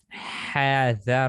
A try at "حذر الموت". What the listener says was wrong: No, do not stretch the ha. حذر الموت.